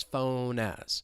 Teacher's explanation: moving that final consonant sound over to the vowel sound in as